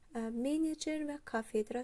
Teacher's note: Vurğusu birinci hecada olanlar olacaq menecer və kafedra sözləri